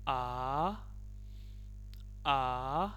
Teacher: the second tone, which is a high rising tone